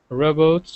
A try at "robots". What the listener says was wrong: I'm going to stop you straight away because you're saying robo. Robo King is, well, robots. So it's a O-R. It's a very good word for the phone and clock sound problem. So phone, clock, this is a common merger. And here, in one word, we've got both of those sounds, robots.